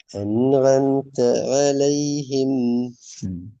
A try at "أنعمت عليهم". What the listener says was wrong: சின்ன சிக்கல் ஐன்லேயும் மிகுது. இப்போ ஐனோட இஷ்யூஸ் இருக்கிறதுங்கிறது குறையணும் அது.